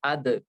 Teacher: देखो दाल भी वहीं से निकला, जुबान की नोक और ऊपर के दांतों की जड़ से